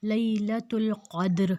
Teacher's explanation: اور اگر زیر زبر اور پیش میں سے کچھ ہے تو اس کی زیر کو ہم ختم کر دیں گے تو وہاں پر وہ لفظ اکیلا رہ جائے گا، لیلۃ القدر، اب دال پہ جزم ہے تو ہم وہاں پہ قلقلہ بھی کریں گے